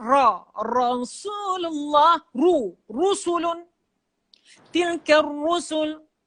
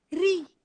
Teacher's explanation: Ra yang berbaris atas ditebal sikit.